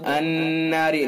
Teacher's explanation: نون حرف مشدد ہے لہذا حرف غنہ ہوگا، ایک الف کے برابر ناک میں آواز لے جا کر کے پڑھیں گے